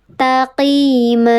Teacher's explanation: Dibacanya panjang 2 harokat, tanwinnya hilang. Taqima. Mad artinya panjang, iwad artinya pengganti. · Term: mad iwad